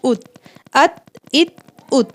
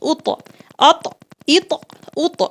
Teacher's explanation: اس والے تا میں آواز فوراً رک گئی ات، لیکن اس والے طا میں جو ہے آواز لوٹتی ہوئی آئے گی یعنی اط، ٹھیک ہے۔ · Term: حروف قلقلہ